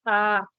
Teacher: cuando articulas la vocal a la lengua baja y se queda en la parte central